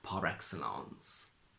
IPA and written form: ˌpɑ:r ˈeksəlɑ:ns (PAR EXCELLENCE)